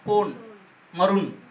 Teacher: பக்கத்துல நகரத்துக்கு பக்கத்துல வரப்ப தன்னகர நகரத்துக்கு பக்கத்திலயும் தன்னகரத்துக்கு பக்கத்திலயும் அது போடுறப்ப இம் உதடு ஒட்டாம போன் மருண் அப்படி உச்சரிக்க வேண்டியருக்கு தனக்குரிய அரை மாத்திரை அளவில் இருந்து குறைந்து கால் மாத்திரை அளவாக அங்க அந்த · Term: மகர குறுக்கம்